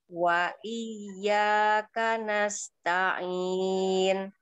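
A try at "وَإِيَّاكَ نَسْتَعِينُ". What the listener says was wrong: Ah, kalau tadi wa iyyaka nasta'in. Gara-gara si ain biasanya. Mau mantepin huruf ainnya, akhirnya ke bawah-bawah huruf yang lainnya. Terakhir, jangan ditutup bibirnya. Huruf apa itu? Huruf mim jadinya. Nah, jadi suara belum selesai, jangan ditutup bibirnya. Kalau dia bukan huruf yang ada di bibir.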